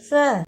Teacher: سا کی آواز نکالنے کے لیے زبان کے کنارے کو اوپر کے 2 دانتوں کے کناروں سے ملائیں